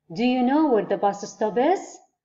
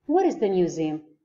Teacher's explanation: يقول في عندي rising intonation في الـ indirect question، وعندي lowering أو lower intonation في الأسئلة غير في الأسئلة المباشرة. فالغير مباشر راح يرتفع عندي الصوت في الأخير